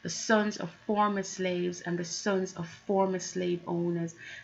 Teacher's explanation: Also sibilants. So it is alliteration, but more specifically sibilants, where the S sounds are being repeated.